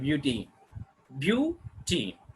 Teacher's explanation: We are going to put the stress on first syllable itself. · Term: syllabic stress